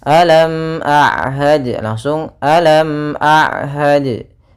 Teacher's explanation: maka suara mimnya harus dibaca dengan jelas. Ya, tidak boleh ditahan, tidak boleh wam, ya, atau misalnya lam, ya. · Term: izhar syafawi